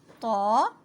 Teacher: زبان کی نوک جب سامنے کے دو دانتوں کی جڑوں سے ٹکرائے